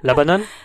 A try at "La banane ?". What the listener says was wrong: 근데 어경이 올라가야 돼. La banane?